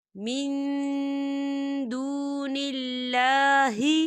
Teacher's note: اللہ کا نام جو ہے یہ باریک پڑھا جائے گا کیونکہ اللہ کے نام سے پہلے زیر ہے